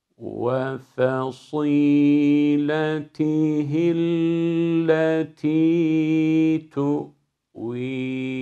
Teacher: F ince sat kalın. Sadı da sine döndürmüyoruz. Met yaparken gunne de karıştırmıyoruz. · başta fasî derken sat harfinin kalınlığı F'ye sirayet etmeyecek, fasî olmayacak.